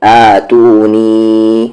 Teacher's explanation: مد کے سمبل کے بعد حمزہ 3 سے 4 حرکت کے ایکول کھینچیں گے